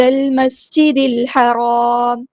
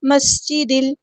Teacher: دال کو ہم نے لام کے ساتھ ملا دینا ہے، حمزۃ الوصل ہمارا ڈراپ ہو جائے گا